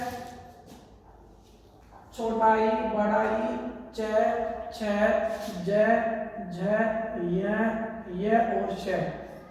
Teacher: ताल या तालू से बोले जाएंगे